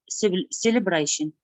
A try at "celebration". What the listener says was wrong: It's not celebration. The stress of your voice should be on that sound actually that we're practicing today. So it's celebration. You need to stress that sound. So the first sound is going to be low. It's a low sound like this.